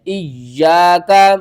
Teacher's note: یوم الدین، ایاک نعبد و ایاک نستعین، ایاک، حمزہ یا زیر یا، الف زبر یا، ایا، کاف زبر کا، ایاک، یا کے اوپر تشدید ہے، یا کو آپ نے 2 بار پڑھنا ہے